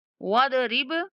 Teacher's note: वदरिब लहुम मसलन, वदरिब, वदरिब बा पर कलकला करना है। कलकला का मतलब थोड़ा सा बा को हिलाकर पढ़ेंगे